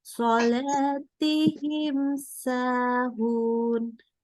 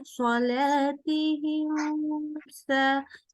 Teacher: Kemudian baik, kalau mim sukun ketemu dengan huruf sin dan shad, maka kedua-duanya adalah idhar syafawi. Mimnya kita baca jelas tanpa dengung. Ya, maksudnya bukan dengungnya tentu pada huruf mim ada dengung, cuman tidak tambah dengungnya gitu ya.